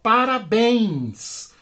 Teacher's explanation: a sílaba tônica da palavra parabéns é a última sílaba por isso oxítona terminada em n s ou n s então ela recebe acento